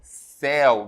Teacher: Céu, vejam que o som é aberto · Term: ditongo aberto